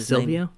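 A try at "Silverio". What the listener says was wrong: It's not Silvio. It's not that. There's another syllable in there. Silvereo, but they don't pronounce it.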